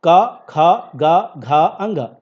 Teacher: क वर्ग का जो उच्चारण होता है वो कंठ से हो रहा है